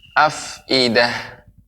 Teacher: lebih banyak mengalirnya udara pengucapan huruf fa ketika sukun